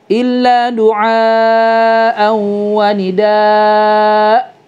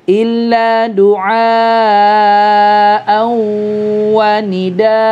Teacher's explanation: Jadi hanya dibaca 2 harokat aja, nggak boleh lebih, nggak boleh kurang ya. Jadi jangan disukunkan hamzahnya di sini teman-teman, tapi di mad iwadkan ya, diganti dengan a dan 2 harokat aja · fathatain ketika diwakafkan maka menjadi mad iwad kan, yang tadinya an menjadi a, 2 harakat